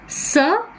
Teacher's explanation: The three-term label for sir is voiceless, hence we have a wide glottis.